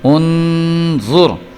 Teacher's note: نون ساکن کے بعد غو آ رہا ہے، تو غو جو ہے وہ بھی حروف اخفاء میں سے ہے، اس لیے یہاں پہ ہم نے غنہ کرنا ہے۔ الف پیش نون ان، غو پیش غو، ان، غو پیش را زر، انظر۔